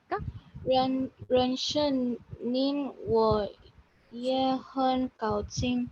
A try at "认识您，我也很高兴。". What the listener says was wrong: Yes, ye is yeah, not year. Not year, it's yeah. The word yeah, ye is pronounced what do you call that? Is pronounced yeah, not pronounced year.